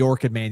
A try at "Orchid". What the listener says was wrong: Still sounds like working to me. Orchid. Orchid. Orchid.